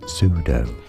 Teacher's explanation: turns out that that's not how the word is pronounced sudo stress on the first syllable silent P